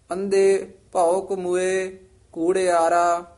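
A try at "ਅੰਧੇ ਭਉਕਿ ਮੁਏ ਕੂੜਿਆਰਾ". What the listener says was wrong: वेण गुर किना ना लद्या इथे विश्राम, अंधे इथे यमक लग जाएगी। भौक मुए जिहड़ा पाठ है ना, ये संबंधक पाठ है। अंधे भौक मुए कूड़ियारा।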